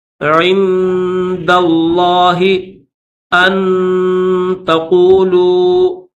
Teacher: اللہ کو موٹا کر کے پڑھیں گے، عند اللہ ان تقولوا، ان کے اوپر غنہ کریں گے